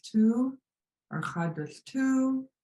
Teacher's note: I might say tu or tu, where it's just like a little bit too much. And it kind of sounds like it's raising up as you would in an English question.